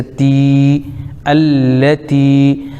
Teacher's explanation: تا کے نیچے زیر لیکن یا ساکن تو یا مدہ ہو جائے گا، ایک الف کھینچیں گے